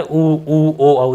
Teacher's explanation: जो मुख है, वो गोल हो जाए, वृत्त की शेप में हो जाए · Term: वर्तुलाकार